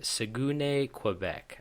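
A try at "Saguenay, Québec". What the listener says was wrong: You should probably try it with like a more French accent, not a Spanish accent.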